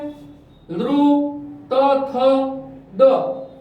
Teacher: જીભનો આગળનો ભાગ છે એ દાંત સાથે, ઉપરના દાંત સાથે અથડાશે, એને દંત્ય સ્વર અને વ્યંજન કહેવાય